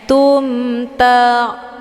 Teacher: Hukum bacaan idhar syafawi jelas tiada berdengung. Tumta la ta, ini ada ain sukun.